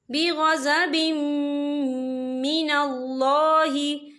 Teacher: मीम जो है हरूफ यरमलून में से है, तो यहाँ पर इदगाम होगा और हम इसे गुन्ने के साथ पढ़ेंगे